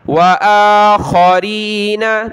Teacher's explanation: حمزہ کے اوپر یہ کھڑا زبر ہے ایک الف کی لمٹ میں اس کو کھینچیں گے